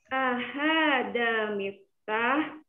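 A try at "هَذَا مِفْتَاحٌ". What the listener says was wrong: Ahada miftahun. Tolong harokatnya juga dibaca.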